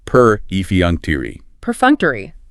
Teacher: Stressed on the second syllable. The third syllable is a schwa, and it ends with that long E sound.